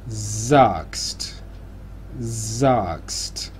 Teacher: Aquí tenemos la S primera, que sería una S sonora, y la segunda S, que sería sorda. La primera va al principio de sílaba.